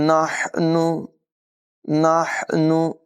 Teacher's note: हा की आवाज़ हलक के दरमियान वाले हिस्से से निकालेंगे